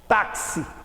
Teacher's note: simples porque este x de táxi têm no plo valor sonoro eu pronunciei o xis como se fosse ks · Eu pronuncio o X como se fosse KS, táxi. Por isso, olha, 4 letras, 5 fonemas. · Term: dífono